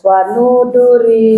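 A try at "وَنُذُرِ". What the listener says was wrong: Nu-nya panjang enggak? Panjang tidak? Enggak, panjang tidak? Nah, pendekin. Wanuduri. Nah, gabung.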